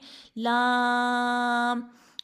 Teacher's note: لام کا مخرج کیا ہے؟ پشت زبان اور اوپر کا تالو